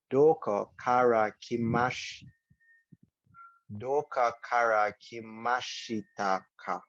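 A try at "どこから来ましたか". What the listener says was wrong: Okay, so you are Englishifying this word. So it's just doko.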